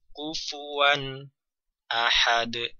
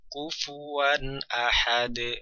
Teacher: Kufuan ahad ada jeda di sana maka itu kurang tepat. Jadi dibaca mengalir namun bunyi nun sukun dibaca dengan jelas.